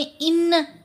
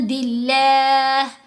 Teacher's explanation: इहफ़ा करते हुए नून की आवाज़ को नाक में छुपाया जाएगा, 2 हरकत की मिकदार इसके ऊपर ठहरा जाएगा।